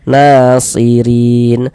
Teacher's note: Na dibaca panjang, mad tabi'i panjang 2 harokat. Nasirin. Huruf ra kalau dia memiliki harokat kasrah, ini baris 1 di bawah huruf harokat kasrah.